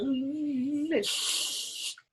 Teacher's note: it's a voiceless l so you're whispering the l